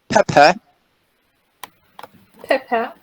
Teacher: we have a stress right on the first syllable and the second syllable is unstressed